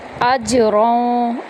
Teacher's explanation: میں داخل کریں گے، حمزہ کو آرام سے پڑھیں گے، اجروں، حمزہ کو جیم کے اندر داخل کرتے ہوئے یہاں پر قلقلہ کریں گے